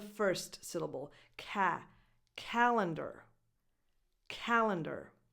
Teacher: The stress goes on the first syllable